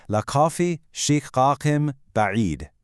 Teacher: the N sound converts to an M before a B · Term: iqlab rule